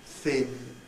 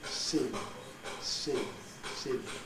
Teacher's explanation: The only way we can do it is to control, to develop a control by listening to the sound which results. So we can get the sort of hissy noise, the sibilant noise from the groove shape of the tongue, and if we tune in very, very accurately to that, we can use it to monitor whether we've done it correctly or not.